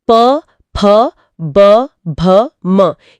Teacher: तो ओष्ठय व्यंजन जो प वर्ग है प फ ब भ म ये दोनों होठों के टकराने से उच्चारित होते हैं।